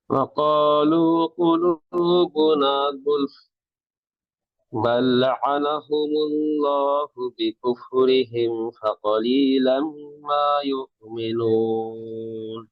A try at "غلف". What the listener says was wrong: এই গয়েন হচ্ছে, গয়েনের মধ্যে রখাওয়া আছে, গুলফ না, গু, জিব্বার গোড়া, ঠিক আছে? কি বলে, জিব্বার গোড়াটা গলার ভিতরে ঢুকাই দেয়, গ, গ, এটা গলার শেষ থেকে মাখরাজ, কিন্তু জিব্বার গোড়ার ভিতরে ঢুকাই দেয়, তখন যে গ, এটা হবে গু, হয়ে গেছে। মানে গু, এই যে কি বলে, গরুর গাড়ির যে লিখতে যে গ, বাগান লিখতে যে গ, এটা কিন্তু না, ঠিক আছে? গুলফ।